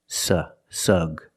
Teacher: the first syllable is the short uh sound like cup and up